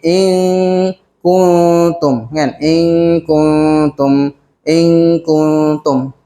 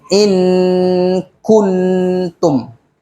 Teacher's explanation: tu jelas Nun tapi ni sorok-sorok sikit in kuntum kanum inum seolah-olah hilang sikit Nun tu maksud sembunyi kita sembunyikan